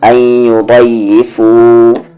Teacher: یہاں پر نون ساکن کے بعد یا ہے، ادغام ہو رہا ہے لیکن غننے کے ساتھ پڑھیں گے